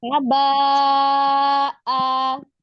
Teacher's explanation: di waqaf misalnya di haba itu tetap dia dibacanya tetap dua harakat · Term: mad iwad